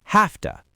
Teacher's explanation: The V sound in have physically transforms into an F sound because it's crashing into the unvoiced T of to